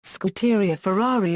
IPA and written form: skudeˈria ferˈrari (Scuderia Ferrari)